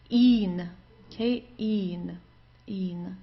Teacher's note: So just a long I and then an N.